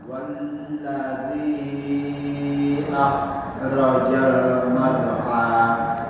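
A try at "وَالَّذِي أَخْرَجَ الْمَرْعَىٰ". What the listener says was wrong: Masih khoknya sama roknya. Roknya itu tebal Bapak. Akhrajal mau'a. Bukan mar'a ya, bukan mar'a, mau'a. Pakai rok tebal ya.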